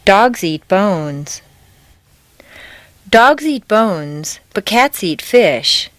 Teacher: Notice that the intonation stays on the nouns.